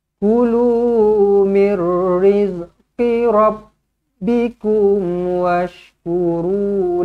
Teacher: Memang asalnya memang dengung, tetapi sebabkan datangnya huruf ra sabdu di sini, terus dengung tu dibuang, terus masuk sahaja. Idgham bila gunnah.